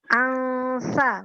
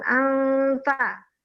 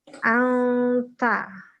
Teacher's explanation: jadi nunnya kita keluarkan di tempat keluarnya huruf ta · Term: ikhfa